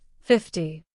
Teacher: in 50, the stress falls on the first part